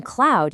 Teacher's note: you go from a wide open jaw to rounded lips.